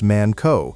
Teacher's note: with a hard K and a clipped O sound